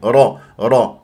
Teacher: الف ساكن قبلها نون مفتوح م الطبيعي حركتين را را هكذا نقرع الراء من غير تكوير الشفاه هي مفتوحه